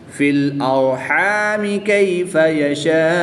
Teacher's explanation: را ساکن سے پہلے حرف پر زبر ہے تو اس لیے اس را کو پر یعنی موٹا پڑھیں گے۔